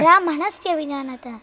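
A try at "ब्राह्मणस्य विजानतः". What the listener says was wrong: Why that stress there? Brahmanasya Vijanatah.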